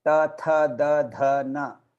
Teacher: And then ta, that is dantavya. It all touches your teeth.